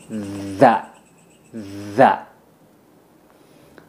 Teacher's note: Kalau za setelah dal, yaitu za-nya menggigit lidah.